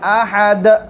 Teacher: اللہ احد، قلقلہ بھی کرنا ہے ہمیں، احد، جیسے بتایا کہ دال کا مخرج ثنایا اولیہ، یہ سامنے کے دانت ہے اس کی جڑ ہے، تو یہ جڑ کے اندر زبان کی نوک لگی ہیں